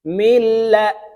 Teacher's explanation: নুন সাকিনের পরে লাম ইদগমে বেলাগুনার হরফ আসছে তাই এই মিম লামের সাথে গুন্না ছাড়া মিলাইয়া পড়তে হবে